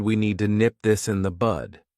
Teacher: Notice that I didn't pronounce the D need, because if I do that, it forces me to take a pause, which slows me down.